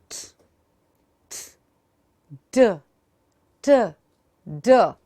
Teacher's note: To enunciate these sounds correctly, your tongue, which is an active articulator, should go to the teeth ridge, which is the passive articulator in this case, touch and go.